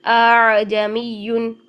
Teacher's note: حمزہ اور حرف مدہ کے درمیانی کیفیت کے ساتھ ہم پڑھیں گے، نہ ہی پراپر طریقے کی نرمی لا کر الف مدہ بنائیں گے، نہ ہی پراپر طریقے کی شدت لا کے حمزہ رہنے دیں گے، بلکہ ان کے درمیان میں رکھیں گے۔ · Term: تسہیل